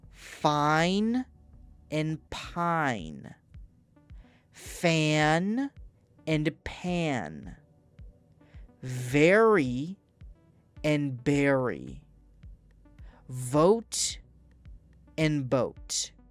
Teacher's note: P and B are made with both lips together. F and V are teeth on lip.